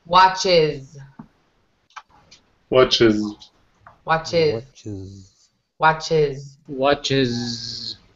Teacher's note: watch in the singular, it has that ch sound at the end